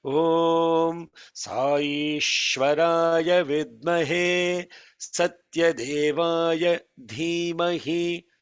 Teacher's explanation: The holding has to be there on Shwa because it is long vowel followed by Shwa.